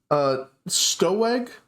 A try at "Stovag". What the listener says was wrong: Oh, hi, my name's Stovag. I know it's a W, but it's pronounced like a V.